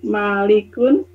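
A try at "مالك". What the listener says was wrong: Nggak pakai tanwin Bu.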